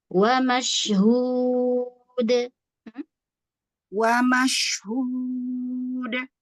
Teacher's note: Untuk dal, jangan sampai ada nafas.